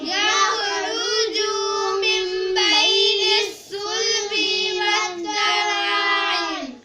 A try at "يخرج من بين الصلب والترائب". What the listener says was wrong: یخرج، جیم کو لمبا نہیں کریں گے، یخرج پڑھیں گے.